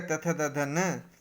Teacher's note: उच्चारण स्थान दांत, दंत्य